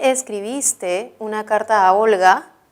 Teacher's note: es una oración interrogativa que puede tener como respuesta sí o no y por lo tanto su tono es ascendente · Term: entonación final ascendente